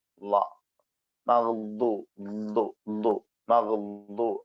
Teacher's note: നാവിന്റെ പാർശ്വവും അതിനോടടുത്ത മേലെ അണപ്പല്ലുകളും ചേർന്നിട്ടാണ് മേലെ അണപ്പല്ല് നമ്മുടെ വായുടെ പാർശ്വം മേലെ അണപ്പല്ലില് തട്ടണം അപ്പോഴാണ് ള ആവുന്നത് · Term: ളാദ്